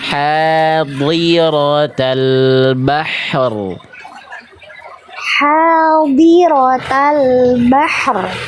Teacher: Ya, tebal ra-nya. Nah, jadi bahri, lidah dalamnya naik.